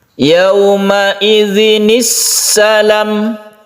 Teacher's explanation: Akan tetapi apabila sebelum hamzah wasal itu berupa tanwin atau kasroten, kalau di sini kasroten ya, tanwin fathah, domaten atau tanwin kasroh, apapun itu tanwin, bila bertemu dengan hamzah wasal maka kita beri bacaannya itu nun yang kecil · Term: nun shogir